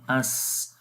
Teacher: اس سین کے اندر سیٹی کی آواز آئے گی